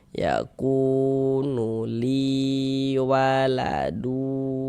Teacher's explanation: li kita baca panjang mad thobi'i panjangnya dua harakat